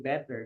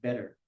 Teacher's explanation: the way how they pronounce letter T is they pronounce letter D